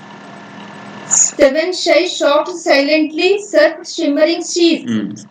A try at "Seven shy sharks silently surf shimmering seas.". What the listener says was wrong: Right, okay.